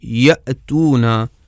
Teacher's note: آواز کی تاریں بالکل بند ہو جاتی ہیں اور بالکل ہوا گزرنے کی بھی گنجائش نہیں باقی رہ جاتی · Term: حمزہ جب ساکن ہو